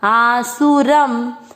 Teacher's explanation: शब्द पूरा होने के बाद लास्ट वाले अक्षर पर अनुस्वार है तो उसको पढ़ेंगे आधा म